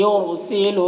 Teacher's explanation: را کو پر پڑھیں گے کیونکہ رائے ساکنہ سے پہلے پیش ہے